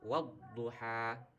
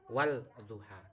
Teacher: suara lam mati, lam sukun ini dilebur, dimasukkan ke dalam suara dod. Jadi membacanya wadduha ya, bukan wal duha tapi wadduha. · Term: idgham syamsiyah